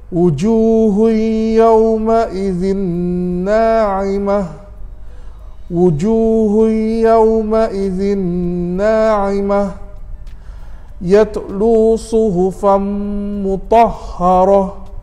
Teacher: kalau kita berhenti ngam-ngam ada ta marbutah begitu, automatik bunyinya akan bertukar menjadi huruf ha